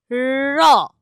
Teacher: দেখো আমি ইচ্ছে করেই টেনে রাখলাম, তুমি যতবারই র বলছো ততবারই দেখো তোমার জিভটা কিন্তু কাঁপছে, ভাইব্রেট করছে, কারণ শ্বাসবায়ু তার যাতায়াতের পথে জিভ বারবার বাধা দিচ্ছে, আর সেই বাধাটাকে ঠেলে শ্বাসবায়ু বেরোচ্ছে বলেই জিভটা বারবার কাঁপছে, সেজন্য রটা হয়ে যাচ্ছে কম্পিত ধ্বনি।